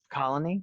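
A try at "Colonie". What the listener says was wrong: Colony. Yeah, It's not pronounced colony, it's colony. It's a little subtle distinction, but colony. So you put the emphasis on the wrong syllable. So you put the emphasis on knee. So colony.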